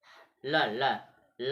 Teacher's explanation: देखिए ल का उच्चारण करते समय ल ल ला कहेंगे, देखिए जिह्वा ताल को छू रही है और बगल में घर्षण करते, बगल में जगह बन रही है ना, अर्थात ला का उच्चारण करते समय हवा जिह्वा के दोनों पार्श्व भागों से बाहर निकलती है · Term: पार्श्विक व्यंजन